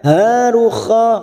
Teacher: kha fathah berdiri atau alif kecil 2 harokat sama dengan ha 2 harokat kita panjangkan